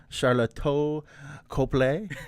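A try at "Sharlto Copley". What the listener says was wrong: With a little bit of an accent. You're putting the wrong emphasis on the wrong syllable.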